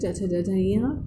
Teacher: च वर्ग का उच्चारण स्थान तालु है